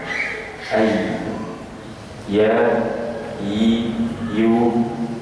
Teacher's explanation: khas baik itu huruf syim kemudian yang berikutnya adalah huruf ya Tengah lidah atau Tengah lisan bersama dengan langit-langit atas bagian tengah